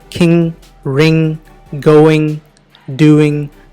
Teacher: కింగ్, రింగ్, గోయింగ్, డూయింగ్ అనేటువంటి పదాల్లో జీ వినిపించకూడదు · గోయింగ్ అనేటువంటి పదంలో మనం జీని ఒత్తుపెట్టి పలకకూడదు, అది డిసప్పీర్ అయిపోవాలి. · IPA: /ŋ/